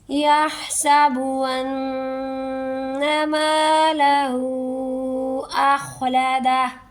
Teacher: یا سابو نہیں بولنا، ہا کو حلق سے نکال کے سین سی سیٹی نکالیں گے، یحسبو، انا پر تشدید ہے اور نیکسٹ ورڈ میم ہے، یہاں پر اخفا ہوگا، ٹھیک ہے، ناک میں لے جا کر گنہ ہوگا، ناک کے باندھ سے میں لے جا کر آواز کچھ ٹائم ہم ایک الف کے برابر تقریباً روک کے رکھیں گے، پھر نیکسٹ ورڈ پڑھیں گے یحسب ان مالہ اخلدہ۔